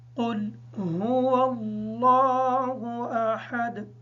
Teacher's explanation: اس آیت میں قاف کو پر پڑھیں گے اور ہا کو ادا کرتے وقت اس بات کا خیال رکھیں گے کہ حمزہ کی آواز ادا نہ ہو یا ہا کی آواز ادا نہ ہو۔